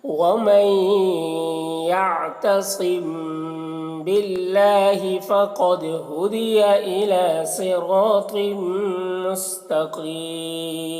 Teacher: मुस्तकीम यहाँ पर वक्फ़ करेंगे तो मद्दे आरिज़ वक्फ़ी होगा।